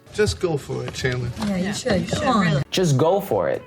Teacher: the stress is on the word go so make sure you hit your main word harder just go